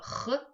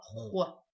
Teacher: звук хо мы произносим, отталкиваясь от звука х, только чуть округляем губы. было х, стало хо.